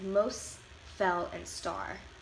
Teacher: some of the T sounds are left out of words in Chicano English · Some of the T sounds are left out in words in Chicano English. Like if you were saying the words most, felt, and start, they would sound more like most, fell, and star.